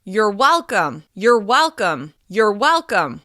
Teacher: We reduce the word your and stress the first syllable of welcome, well. Because it's reduced, the vowel in come turns into the schwa sound, come.